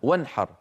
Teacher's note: العرب كانوا إذا تكلموا فجاء بعد النون مثلا حاء كقوله وانحر يظهرون النون فيقولون وانحر عادي كما يتكلم الواحد منا وانحر.